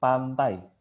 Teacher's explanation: tapi kalau kita ngomong pantai lidah kita akan kena gigi